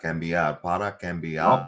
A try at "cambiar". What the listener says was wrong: The vowel is important. It's not cambiar. It's cambiar. This is what you're saying. You're saying Cam. It's not Cam. It's not Cam Newton. Gotta practice the vowel. Sí.